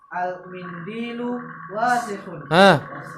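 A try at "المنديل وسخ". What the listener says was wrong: Jangan dipanjangin. Wasikhun. Al-mindilu wasikhun.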